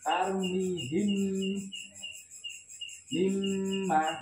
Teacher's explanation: Jadi mimnya itu benar-benar bibir kita rapat. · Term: idgham